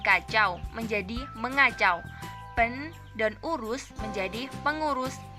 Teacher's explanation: Fonem n berubah menjadi eng.